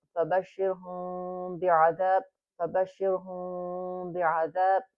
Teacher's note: Okay, so in this situation, this rule tells us that we need to read it with a kind of like a hidden sound. The lips are not really pressed together when we recite this, but the lips are kind of, it's like a little open, but then the nasal sound is coming out also. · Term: iqlab